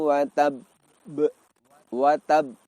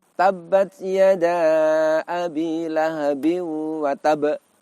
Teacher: ketika waqaf kita tahan sejenak kita lepaskan salah satu sifatnya dalam hal ini adalah sifat Qalqalah